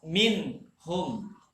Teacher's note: Tapi bahagiannya kalau dalam hukum tajwidnya itu izhar. Izhar halki, yang jelas, yang nyata, tidak ada samar, tidak ada dengung, tidak ada sembunyi sedikit pun.